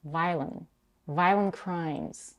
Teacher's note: She significantly reduces the second syllable. Almost no schwa there. She doesn't say violent, she says violent.